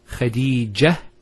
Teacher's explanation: If we stop at the ta, Khadija, it's a ha.